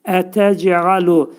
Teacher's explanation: ayn hərfinin məxrəcini düzləyirik, boğazın ortasından çıxarırıq və əyləşdiririk.